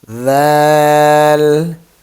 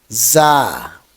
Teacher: Dal is light when your tip of tongue touches to upper teeth. Dal. And za is hard.